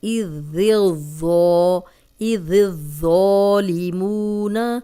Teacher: ذال پہ زبان جو ہے باریک رکھ کے پھر اس کو موٹا کرنا ہے۔ اذ الظالمون، واو مدہ ہے، 2 حرکات لمبا کریں گے، جزم والی واو پیچھے پیش۔